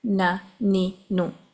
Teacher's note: خیشوم سے آواز تو آ رہی ہے لیکن بہت معمولی ہوتی ہے، فرق محسوس نہیں ہوتا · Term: نیزلائزیشن